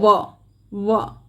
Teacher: हमारे जो दंत पंक्ति हैं वो होठ को स्पर्श कर रही है, तो ये दंतोष्ठ ध्वनियाँ होती हैं। · दंतोष्ठ जहाँ पर होठों के साथ साथ दांतों की सहायता ली जाए, अर्थात ऊपर के दंत पंक्तियाँ नीचे वाले होठों को स्पर्श करती हैं, उसे दंतोष्ठ ध्वनियाँ कहते हैं।